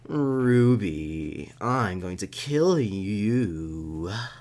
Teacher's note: It's real breathy. It's real breathy at the end.